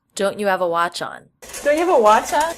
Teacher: This is a common reduction, dropping the H in function words like have, had, her, his.